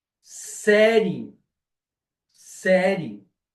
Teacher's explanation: Eu transformo o i em semivogal · eu quase que eu omito o i eu não digo S eu não digo série eu digo série